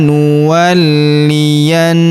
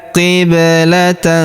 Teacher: Perhatikan huruf li kita tahan dan tekan karena terdapat tanda tasdid di atasnya.